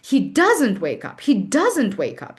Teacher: We just stress the negative and we like actually pronounce like the whole not